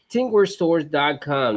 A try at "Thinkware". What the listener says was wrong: I like how you say tink. Tinkware. It's think. Like ink with a TH. Yeah, think. You say tink. Think.